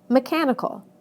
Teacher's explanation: listen to how the stress moves right to the syllable immediately before the suffix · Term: word stress